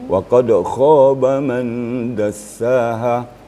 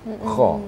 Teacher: Kha-nya ada harus getaran ya. Dia terasa getaran pada tenggorok kita. Kha gitu. Jadi tidak boleh ringan saja begitu ringan ya, saja Ustaz, ya?